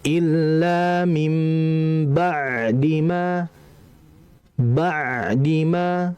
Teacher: ain ini kalau sukun dia itu harus dibaca mengalir sama seperti lam mati.